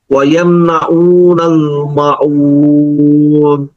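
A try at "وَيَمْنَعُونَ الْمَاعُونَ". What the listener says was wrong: মাউন হবে না, মা ও আইন গলার দিকে আছে।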